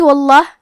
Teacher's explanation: کلمت واللہ یہاں بھی حرف اللام کا حکم ہے تفخیم تو ہم حرف اللام کو موٹی آواز میں پڑھیں گے